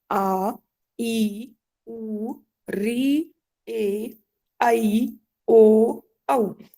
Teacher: दीर्घ स्वर तो 8 जो स्वर है, आ ई उ री ए ऐ ओ औ, ये सभी 8 स्वर कहलाते हैं दीर्घ स्वर। इनको बोलने में 2 मात्रा जितना, 2 बार पलक झपकने जितना समय आवश्यक है या उतना समय लगता है।